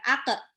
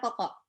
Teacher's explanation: Kalau qaf sukun itu dipantulkan. Ako, bukan ake, tapi ako.